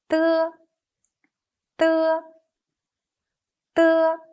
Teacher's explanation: is an unaspirated voiceless alveolar plosive. When we pronounce it, the tip of the tongue and upper alveolar ridge form a closure. Long air is compressed behind this closure, then escapes.